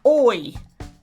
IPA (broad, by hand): ɔɪ